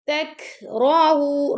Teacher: تک کاف پر ہم حمز کریں گے. تَكْرَهُوا را کو پر پڑھیں گے.